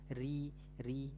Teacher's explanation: ro itu sebenarnya masuknya di kriteria huruf tipis Ri Ri nah huruf tipis karena dia memang lidahnya basicnya pangkal lidahnya turun nah gitu istiffal lalu setelah istighfal dia infitah ya terhamparnya lidah